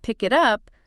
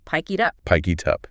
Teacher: it sounds like one single 3-syllable word